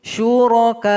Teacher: Di sini ada waqaf qaf lam dan huruf terakhirnya huruf hamzah yang menompang sama huruf waw. Jadi hamzahnya yang kita baca. Sedangkan huruf alif yang berada setelah hamzah ini abaikan saja ketika kita berwaqaf. Dia tidak boleh dipanjangkan. Syuraka'u itu salah.